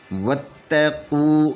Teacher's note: یہ الف نہیں پڑھا جائے گا اور باء کو تا کے ساتھ ملا کر پڑھیں گے، اور تا کے اوپر 3 کنگرے والی شاد ہے، تو یہ تا شاد ہونے کی وجہ سے اپنے مخرج میں سختی سے پڑھی جائے گی اور یہ ڈبل پڑھی جائے گی